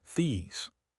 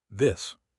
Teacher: I want these cheese/zzz shoes, not this fish/ss shoe. Listen to the vowel length. These takes time. This is fast.